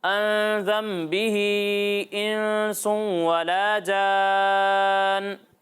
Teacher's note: یہاں مد منفصل ہو رہا ہے، ٹھیک ہے، اسے 2 یا 2.5 الف تک کھینچ کر پڑھنا ہے.